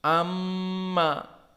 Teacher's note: Seperti sekarang mim musyaddadah menjadi amma, dari khaysum, dari hidung. Maka jika ditutup hidung kita, gagallah pengamalan dari gunnah di sini.